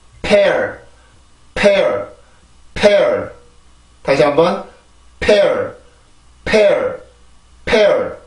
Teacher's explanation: P 발음은 양순 폐쇄 무성음입니다. 양순 폐쇄 무성음. 입술을 막아주고 입술을 닫아주고 목에서 올라오는 공기를 한번 막았다가 이렇게 내보내면서, 그리고 이제 입술이 막혀 있으니까 열리면서 공기가 나가게 되죠.